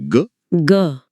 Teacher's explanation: अब बोलिए ग ग। अरे हां एक जबरदस्त कंपन महसूस हो रहा है। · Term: सघोष